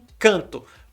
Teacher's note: Vai ser o EN formando em e depois um I. Encanto. É muito complicado. Vira um E-I nasal, tudo junto.